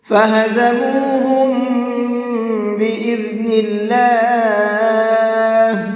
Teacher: اس لیے کہ میم ساکن کے بعد میں با ہے، اور میم ساکن کے بعد میں با آتا ہے تو تجوید کا قاعدہ یہ ہے کہ وہاں پر غنہ اور اخفا دونوں کر کے پڑھتے ہیں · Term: ادغام شفوی